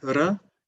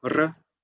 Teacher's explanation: the single R is usually an alveolar flap, like r, and the double R is the trill r